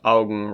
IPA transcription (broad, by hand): aʊɡŋ